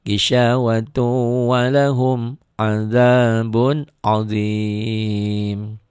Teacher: Yang belum biasa bingung juga, gisawatun bisa-bisa dibacanya idhar, padahal itu idgham bigunnah.